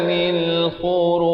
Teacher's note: Saya waqaf di sini saya berikan pantulan kerana jim merupakan huruf qalqalah